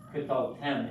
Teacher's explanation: accent on the last syllable